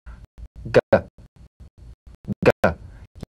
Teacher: You'll feel a crisp tap and a voiced pulsation of the back of the tongue.